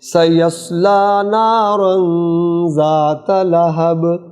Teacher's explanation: یہاں سواد کو پر کریں گے اور نارن غنہ آئے گا. لہبن جب با کو سائلنٹ کریں گے تو قلقلہ ہوگا